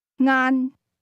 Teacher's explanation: The word lunch is pronounced with a mid-level tone.